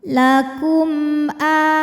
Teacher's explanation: mim sukun ini kita bunyikan dengan jelas izhar bunyinya m tidak ditahan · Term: izhar syafawi